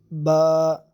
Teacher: ہونٹوں سے ادا ہونے والا حروف پہلا ہے یہ با، ٹھیک ہے، یہ ہونٹوں سے ہی ادا ہوگا اور اس کو لمبا بھی نہیں کرنا، با۔